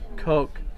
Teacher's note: if you put your hand front of your mouth and say cow or Coke there's a big puff air comes out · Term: aspirated